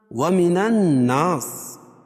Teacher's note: الناس نون مشدد ہے، غنہ ہوگا اس میں